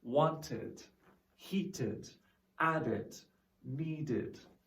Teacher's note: all of these sounds have the id sound and have two syllables